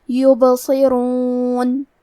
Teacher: کلمت یبصرون میں حرف البا پہ جزم ہے، یہاں با کا حکم ہے قلقلہ۔ قلقلہ کا معنی ہے حرف ساکن کو ہلانا، تو ہم حرف البا کو ہلاتے ہوئے یہ کلمہ کو پڑھیں گے